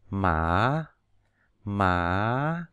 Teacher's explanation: tức là từ thấp lên cao mà nó gần giống dấu ngã của mình hả từ tháng